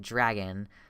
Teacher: tightening of the tongue in the back of the mouth so dragon involves moving from the front of the mouth to the back of the mouth and it's one like motion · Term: hybrid sound